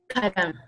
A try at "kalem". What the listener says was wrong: No, not lim, like lam. Like this is softer on this one. You have to like widen your mouth. Like I think like you confuse that.